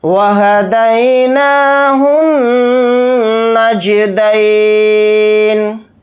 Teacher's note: واو کو جلدی پڑھیں گے، ہا کو جلدی پڑھیں گے، دال یا زبر دئی کو جلدی پڑھیں گے، نون کے اوپر کھڑا زبر ہے، نون کو تھوڑا کھینچ کر پڑھیں گے، ہا کو نون کے ساتھ ملا کر پڑھیں گے، نون پر تشدید ہونے کی وجہ سے الف لام نہیں پڑھے جائیں گے۔